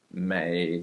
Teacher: a low third tone that does not come back up. It is not 美 国 人.